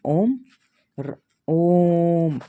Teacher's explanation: प्लुत स्वर में तीन गुना लगता है